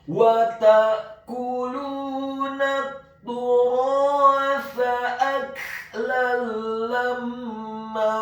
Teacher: Kata lamma, huruf lamnya ditasydidkan fathah 1 harokat, huruf mimnya ditasydidkan dengan gunnah atau dengung seperti mat atau panjang 2 harokat. Setelah huruf mimnya ditasydidkan kemudian fathah 2 harokat karena setelahnya ada alif.